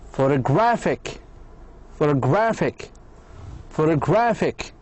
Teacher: the IC put the stress, or put the stress at the penultimate, at the syllable before it